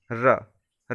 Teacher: जिन वर्णों का उच्चारण करते समय जिह्वा और में 2-3 बार कंपन होता है, प्रकंपित व्यंजन कहलाता है। जैसे कि र को र, र को करके देखिए तो इसमें क्या है, कंपन होगा, वाइब्रेट होगा।